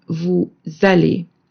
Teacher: the verb starts with a which is a vowel and this is why we make this sound z